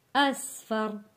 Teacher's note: یہاں پہ سین سیٹی والا لفظ ہے اسفر، را کو موٹا پڑھیں گے